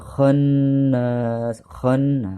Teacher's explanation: Nun tasydid disebut dengan gunnah ya artinya ditekan dan didengungkan